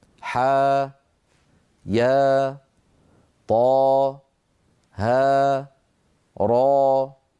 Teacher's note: ينطق كل منها على حرفين ثانيهما حرف مد ويمد بمقدار حركتين مدا طبيعيا